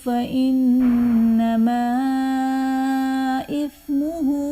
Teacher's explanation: فإنما إثمه میں نون مشدد ہے، یہاں پر غنہ کر کے پڑھیں گے